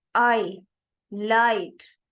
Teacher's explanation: they are called falling diphthongs because in them the first element is more prominent and they also carry length and stress